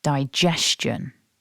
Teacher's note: the word is divided into three syllables and that we stress syllable two